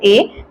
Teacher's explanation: ए तो कंठ का भी उपयोग हो रहा है दोस्तों और तालू के भी सहयोग से हो रहा है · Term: कंठ एवं तालू